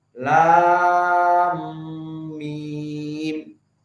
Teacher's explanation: Maka mim sakinah di lam bertemu dengan mim, di sini ada idgham.